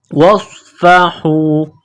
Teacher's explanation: صاد میں سیٹی کی آواز پیدا کرنی ہے، صاد کو موٹا کرنا ہے